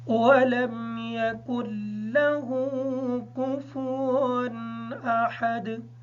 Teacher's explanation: اس تنوین کا غنہ نہیں ہوگا کیونکہ اس کے بعد حروف حلقی میں سے حمزہ آ گیا ہے۔